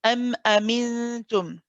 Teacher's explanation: Okay, so we say we don't say we don't say it too fast, but we don't stay on it too long either. So we should hear the sharpness of the hamza, where your voice, after saying your voice stops, your voice starts again. · this is called idhar shafawi. Okay, we pronounce the meme clearly. Okay, there's no prolonging too much, that we don't hold it and say for too long. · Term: shidda quality